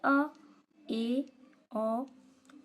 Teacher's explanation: अर्ध विवृत स्वर तो जिन स्वरों के उच्चारण में मुख द्वार आधा खुलता है। अर्ध विवृत स्वर कहलाते हैं।